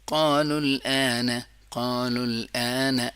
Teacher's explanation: لام کو بالکل کلیئر سٹاپ کریں گے اور پھر آ کو بالکل کلیئر ادا کریں گے